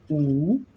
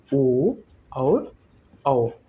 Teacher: बड़ा ऊ, इसमें भी वृत्ताकार ओष्ठ हुआ। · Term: वृत्तमुखी